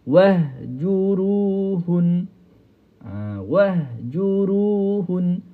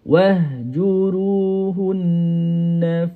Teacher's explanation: Hun terus habis suara. Kalau yang ada sabdu hun dia bila dia berhenti tu dia ada n dia tu panjang sikit. Itu cara kita nak wakaf pada huruf nun dan juga mim bersabdu. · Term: wajibul ghunnah